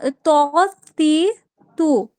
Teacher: জিহ্বার আগা উপরের দাঁতের মাড়ির সঙ্গে লাগে। উপরে সামনের ২ দাঁতের গোড়ার সাথে। দুই দাঁতের মাড়ির সঙ্গে লাগে।